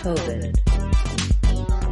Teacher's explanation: The second syllable has the reduced I vowel and is shorter in duration than the first syllable. COVID. Americans use an unreleased D in this word.